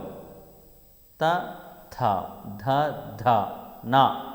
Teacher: దంత్యములు దంతము సహాయము చేత పలకబడేవి